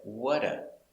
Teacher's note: the t kind of disappears